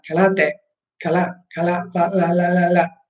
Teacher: in giapponese la R si pronuncia come una L morbida, non è ka, la, te, ma kala, te, kala, kala, la, ok, morbida.